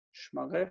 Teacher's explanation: adding the second person feminine suffix, shifted the accent, which reduced the first vowel to shva